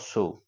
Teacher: এ উচ্চারণে কি বৈশিষ্ট্য দেখছি ঠোঁটগুলোর কি পরিবর্তন দেখছি না হস ঠোঁট দুটো ফুঁ দেয়ার মত গোল আকার ধারণ করছে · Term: বর্তুল বা কুঞ্চিত স্বরধ্বনি